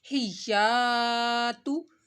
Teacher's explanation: الف سے پہلے زبر آ رہا ہے تو الف کو آپ نے ایک الف کے برابر کھینچنا ہے، لمبا کرنا ہے اس کو